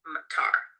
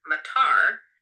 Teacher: the word for rain, matar, low. But if you shift it to a high tone, matar, it can mean airport